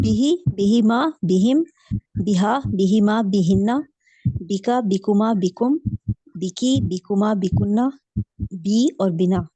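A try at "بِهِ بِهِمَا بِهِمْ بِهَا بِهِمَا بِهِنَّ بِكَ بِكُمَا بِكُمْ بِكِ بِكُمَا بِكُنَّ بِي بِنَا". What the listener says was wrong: ठीक है, सही हो गया।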